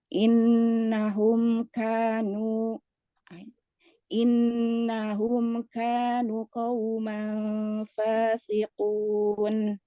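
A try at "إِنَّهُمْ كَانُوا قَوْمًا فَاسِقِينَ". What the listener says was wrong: Oke, ada dua hal. Pertama, kanu, nunya ini tetap wawunya memanjangkan huruf nun. Yang ada lingkaran kecil di alif yang menghilangkan alifnya istilahnya. Diabaikan alifnya. Tapi wawunya tetap ada. Dan terakhir bukan fasikun dong.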